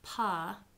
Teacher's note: there's actually a little bit of time between when you release that sound and when your voice actually turns on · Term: voice onset time